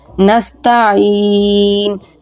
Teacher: یہاں پہ یا ساکن ہے اور یا کا ما قبل مکسور ہے، تو یہاں پہ یا مدہ ہے، اس کو یا مدہ کی طرح 1 سے 2 الف کی مقدار کھینچ کے پڑھیں گے